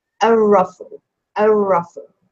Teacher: ra is a sun letter, so you don't pronounce that lam.